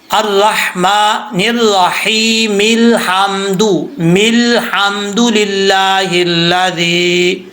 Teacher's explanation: یہ جو لام ہے حمزہ کے بعد، حمزہ کو تو چھوڑ دیں گے، حمزہ کو نہیں پڑھیں گے. میم زیر لام مل، راہی مل حمدو، اس طریقے سے پڑھا جائے گا.